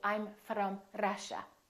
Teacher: foreign accent so somebody from Russia might say I'm from Russia that's called a rolling r that sounds like a foreign accent to American speakers